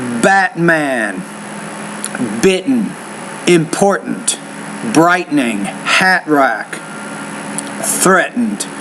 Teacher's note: in American English we have a glottal stop so we don't really pronounce the T when it's in the middle of those